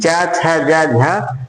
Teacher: च, छ, ज, झ, ये चारों संघर्षी स्पर्शी व्यंजन कहलाते हैं।